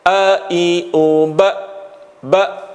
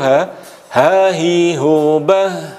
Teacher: Kalau hamzah tadi syiddah, a, i, u, ba langsung berhenti. Sedangkan kalau ha, hi, hu, bah mengalir.